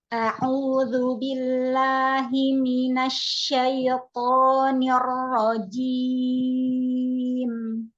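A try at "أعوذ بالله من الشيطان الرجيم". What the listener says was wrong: Ya, linnya syaito. Jangan seperti itu. Lin ringan saja. Syaito. Tidak syaito. Jangan dipantulkan linnya ya.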